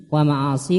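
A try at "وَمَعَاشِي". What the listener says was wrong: Wa ma'ashi, bukan ma'asi.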